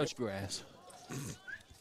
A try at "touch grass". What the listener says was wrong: Please enunciate that G next time a little better.